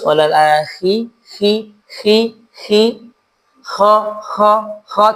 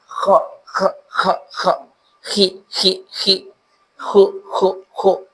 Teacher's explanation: Intinya kondisi dia lebih lebih pecah dari sisi udaranya. Jadi sehingga hembusannya lebih banyak.